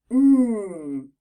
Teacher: Sound the n Sound is similar to M but this time we actually use our tongue right behind our top teeth the air still flows through our nose and our voice is on · when we make n like in the word Nest our tongue touches just behind our top teeth so we're going to put that card under the heading tongue